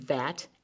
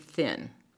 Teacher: the two sounds of th the voiced and unvoiced